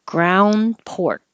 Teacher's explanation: you don't hear the D because your tongue just goes to the D position ground and you don't hear the K because your tongue goes